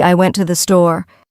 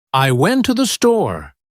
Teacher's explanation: the words to and the become so weak that they almost disappear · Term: unstressed words